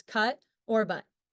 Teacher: The short U is produced with the tongue position at mid-height and back in the mouth, with the jaw relatively open, located in the open mid-back position.